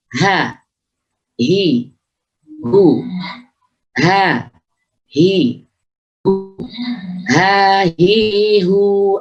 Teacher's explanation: Ha, kita harus hati-hati pengucapan ha, jangan sampai tercampur dengan ha yang ada di tengah lidah. Ha punya sifat hamas, dia harus lirihnya suara. Dia punya sifat rukhawah, mengalirnya suara. Jadi tekanan ha harus tepat. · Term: huruf ha